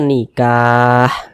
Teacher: sukunkan harus kita matikan ini kita berhenti tepat di huruf ha huruf Ha kan tidak dibaca panjang nih Nah makanya kita sukunkan atau kita matikan